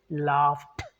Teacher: No, because F sound is voiceless. What we do, the first rule says, then we must pronounce it as t sound. So laugh, because of the F sound, even though it's ed, we say laughed.